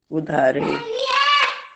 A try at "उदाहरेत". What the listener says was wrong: देखो उसमें उसमें फर्क है, उद्धरेत और उदाहरेत।